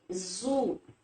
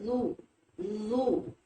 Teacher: زبان کی نوک سامنے کے اوپر کے دو دانتوں کے اندر کنارے کے ساتھ لگے گی، تو یہ حرف بآسانی بلا تکلف ادا ہو جائے گا۔